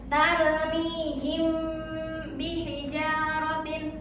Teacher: Ikhfa syafawi adalah hukum bacaan ketika mim mati bertemu dengan ba. Lalu suara mim mati dibaca samar-samar antara jelas dan dengung. Nah, disertai dengan gunnah sekitar 2 harokat. · Nah, disertai dengan gunnah sekitar 2 harokat. Jadi ketika hukum mim mati bertemu dengan huruf ba, itu dibacanya dengung selama 2 harokat.